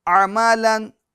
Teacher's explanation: लाम दो ज़बर लन, अमालन, आइन को अच्छे तरीके से वाज़े करेंगे, दरमियान हल्क से अदा करेंगे।